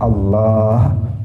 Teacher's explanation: yang lain pendek kecuali lam di tengah harus dipanjangkan